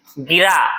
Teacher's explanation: र पे आप बेसी जोर दे रहे हैं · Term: बलाघात